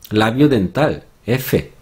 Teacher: La F en español, en el cuadro de arriba, está en el labio dental, fricativa, y es sorda.